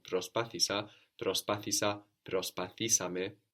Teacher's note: We're adding two syllables there with ame, so the accent also moves forward one